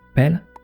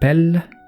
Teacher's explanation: But in Cornish or languages where germination has a phological value, a long s sound modifies the meaning of a word. Here's an example of the difference between short and long consonants that change the meaning of the word. Pel is a ball, but pel means distant.